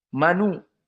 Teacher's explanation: dihilangkan hamzahnya dan harakat dari damah dipindahkan kepada yang sebelumnya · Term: naql